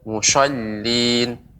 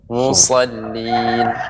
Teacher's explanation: desisnya panjang, akan tetapi ditebalkan, dinaikkan suaranya, diangkat suaranya, ya, lidahnya naik ke atas